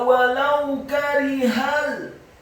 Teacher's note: Kata walau karihal, wawunya walau, huruf wawunya dibaca fathah 1 harokat, kemudian lamnya dibaca tipis fathah 1 harokat, dan huruf wawu yang kedua dibaca sukun dengan posisi bibir kita agak tertutup dan dengan gerakan yang agak cepat